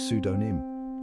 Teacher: It's got a silent P lurking in the shadows, just waiting to trip people up. That P is sneaky, always there but never heard.